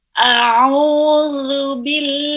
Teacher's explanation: Tidak ada masuk hidung huruf za.